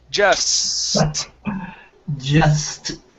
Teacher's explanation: with this word you want to elongate that s so you can practice saying the s then the t okay · let's shorten the s just a bit